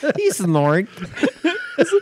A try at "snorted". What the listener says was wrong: It's snorted. That's snort. Snork? It sounds like you're putting a K at the end of it.